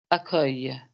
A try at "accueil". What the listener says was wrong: There you go. It's perfect. Okay. Absolutely perfect.